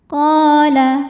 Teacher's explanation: Mad tabi'inya mad tabi'i zahiri. Sebab ada alif yang sebelumnya berbaris fathah, maka huruf qaf kita panjangkan 2 harokat.